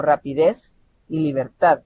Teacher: el mayor tono de voz está al final pero no no se acentúa no podemos decir libertad suena suena